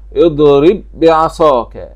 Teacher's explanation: قوله تعالى: اضرب بعصاك، هذا إدغام متماثلين، أي الباء جاء بعدها باء مشددة، فإدغام متماثلين جاء بعد الباء الساكنة باء متحركة، فاتحد الحرفان في المخرج والصفة.